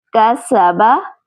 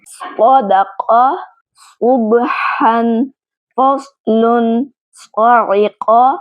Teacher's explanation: سین کو باریک ادا کرنا ہے، اس صاد کو موٹا ادا کرنا ہے۔